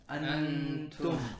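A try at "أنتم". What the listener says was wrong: Yeah, this will be wrong for ikhfa. Now drop your tongue. Antum. And this is what we call hiding. You're hiding the ikhfa, you're hiding the tongue behind what? The letter that's coming up.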